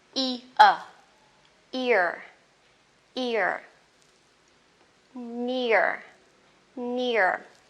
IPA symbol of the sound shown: ɪə